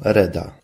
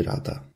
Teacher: zbitki liter takich jak ja i ra wymawiano jako je i re